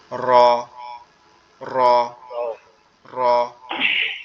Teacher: তালুর সঙ্গে লাগবে, লেগে একটু কম্পন মতো দিয়ে আওয়াজ হবে